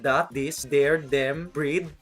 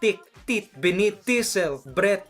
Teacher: there's no TH. It's either D sound like that, this, there, them, breed, or T sound like tick, tit, beneath, tisel, breath.